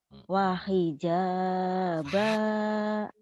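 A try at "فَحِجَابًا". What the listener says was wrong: Fa fa bukan wa fa Fanta F.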